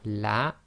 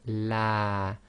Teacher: So we have on the right hand side we have la, and on the left hand side we have la, the first one being one long and the second one being two long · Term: long vowel